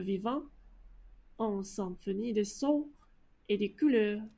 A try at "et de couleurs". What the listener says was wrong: Okay, and like, so you pronounce de fine when you said symphonie de son, but then when you say et de couleurs, I'm kind of hearing et des couleurs, I think. Right, et des couleurs, but I'd want et de couleurs. I think you would also benefit from speaking a little slower.